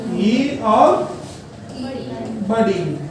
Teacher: जिन स्वरों का उच्चारण स्थान तालवा होता है उन्हें कहा जाता है तालव्य स्वर।